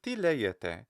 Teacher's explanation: I'm making the ti the higher one, and then the le, I'm making it high, but it's not as high